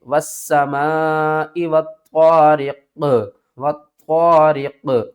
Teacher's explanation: قاف کے اوپر قلقلہ بھی کریں گے اور قاف کو موٹا بھی پڑھیں گے